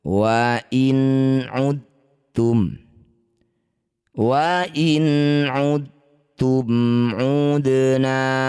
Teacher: Ini disebut bacaan namanya idgham mutajannisain. Cara bacanya bunyi dal masukkan pada huruf ta. dengan menghilangkan sifat qalqalah dari dal. Jadi dalnya tidak usah dipantulkan.